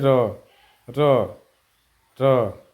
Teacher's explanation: र के उच्चारण स्थान में जीभ बेलन के तरह लुढ़कती है और उसमें कंपन होता है। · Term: लुंठित या प्रकंपित व्यंजन